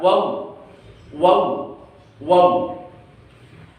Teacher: 2 bibir atas dan bawah tidak sampai menempel, tetapi mengambang dan agak mencucu. Dan dari dalam keluar suara waw, waw, waw.